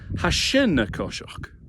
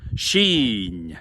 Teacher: But the word is not shin, it's sheen. It's longer with that double letter and it's got that closed, very palatal N sound. Sheen. And it runs into the verbal noun walking.